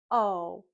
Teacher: We also know that when we make the O sound, our mouth is open, our lips are round, our tongue starts at the bottom and then moves up and to the back, and we know that O is a voice sound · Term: long O sound